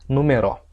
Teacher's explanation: eu transferi a sílaba tônica do ME para o RO